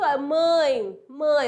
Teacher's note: o a é vogal o e é semivogal